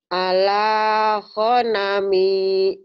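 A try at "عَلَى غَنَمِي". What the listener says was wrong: Ala go bukan ho. Ala gonami. Bu guru bukan bu huru. Ala go.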